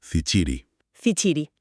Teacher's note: implica un sonido africado sordo. Es la che fuerte nuestra.